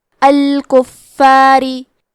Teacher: تو ہم حرف را کو پتلی آواز میں پڑھیں گے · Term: ترقیق